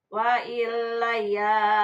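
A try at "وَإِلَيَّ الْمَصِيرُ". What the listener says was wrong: Tahan. Wa ilayya di atas tahan.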